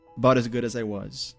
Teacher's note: There's an American T, a flap T in about, which connects with as good